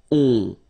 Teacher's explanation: so it's a nasal and it goes in your nose and it goes like on. · you don't hear any N, so it's really on